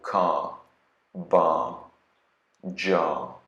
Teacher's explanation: for words that end in an R, for example, car, bar, jar, you don't hear that R at all. It's actually silent.